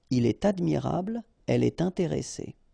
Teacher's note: you should make the liaison, and in that case it's with T